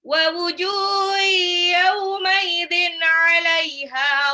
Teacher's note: tanwin ketemu ain itu izhar dibaca jelas, 'alaiha haknya 2 harokat ghabarah.